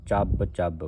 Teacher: ਇਹ ਕਸ ਕੇ ਬੋਲਣਾ ਅਧਕ ਲਾ ਕੇ ਉਚਾਰਨ ਕਰਨਾ